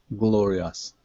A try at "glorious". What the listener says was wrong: Okay, now, here at the end, instead of saying gloria, us, it's a short I sound. Is, glorious.